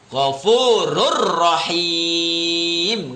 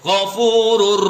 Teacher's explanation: Harus idgham tapi nggak dengung. Idgham itu memasukkan huruf pertama ke huruf yang kedua.